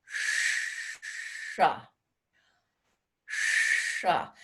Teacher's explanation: But when we do see the letter S with a dot underneath it, that's another what we call grossly an SH sound. But that sound is made by curling the tip of the tongue towards the hard palate